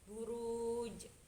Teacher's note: Dan di bagian huruf jim itu ada qalqalah kubra yang cara membacanya itu lebih dipantulkan lebih besar.